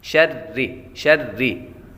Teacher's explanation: فلق، فلق، برب الفلق، من شر ما خلق، من شر ما خلق، من یہاں پر غنہ کریں گے، نون ساکن کے بعد شین حروف اخفاء میں سے آ رہے تو غنہ کریں گے، اخفاء کا قاعدہ لگے گا۔ شری، شری، را کے نیچے زیر ہو تو را کو باریک پڑھتے ہیں